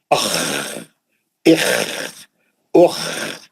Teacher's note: جب بھی خا پڑھیں گے قرآن میں کھردرا آواز رہنا ہے نا